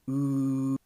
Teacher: The lips are really round when you're pronouncing this vowel. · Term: rounded vowels